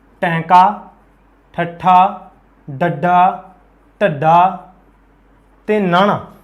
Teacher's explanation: जदों आपां इन्हां व्यंजनां दा उच्चारण करते हैं उस वेले आपां नोटिस करांगे जिभ है जिहड़ी मूँह दे विच उल्टी हो जाती है। टैंका, ठट्ठा, डड्डा, ढड्डा, नाना, इस करके इन्हां दा नाम है उल्ट जीभी व्यंजन।